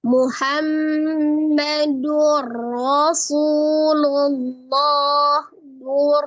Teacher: huruf ra sifatnya tawassud jadi mengalir sebagian Maka jangan diputus tapi juga jangan diunahkan Muhammadur Rasulullah Dur Ya tidak terputus ro rnya berharakat fathah dibaca · Nun sukun atau tanwin yang bertemu dengan huruf ra, maka hukumnya adalah idgham bila gunnah. Dilebur atau ditasdidkan ke dalam huruf ra, tidak disertai dengan dengung. Jadi tidak usah didengungkan, tapi ditasdidkan saja ke huruf ra. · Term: tawassut